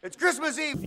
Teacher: Now he goes really high in pitch for that because he's stressing those both words almost the same.